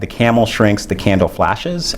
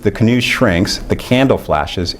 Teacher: Here you got phonological overlap, but the metrical stress differs, right? You get stress on the second syllable for the prime and on the first for the target. And what we find is you get lengthening for both of these, but you get way more lengthening when there's metrical and phonological overlap.